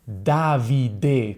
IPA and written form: ˈdavide (Davide)